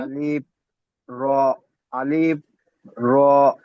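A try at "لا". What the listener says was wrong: জি না, এখানে আছে লাম আলিফ। এই যে এখানে আছে, প্রথমে এটি আছে লাম, আর তার উপরে আছে এটি আলিফ। লাম আলিফ।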